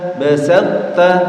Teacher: karena to sama ta ini satu tempat keluar, maka harus diidghamkan. Namanya idgham mutajanisain.